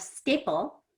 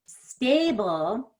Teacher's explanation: Before a P, the A is pretty fast. Stable, before the B, I want to stretch it out a little bit more. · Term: long A